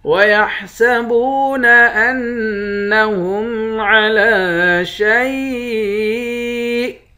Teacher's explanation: نون مشدد پر غنہ کریں گے. لام کے اوپر کھڑا زبر ہے، کھڑا زبر کو ایک الف کے برابر کھینچتے ہیں.